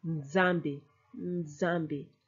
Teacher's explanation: But the N is very brief. The Z takes over.